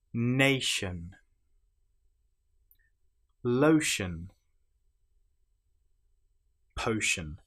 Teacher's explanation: the ti here is pronounced exactly the same as the sh sound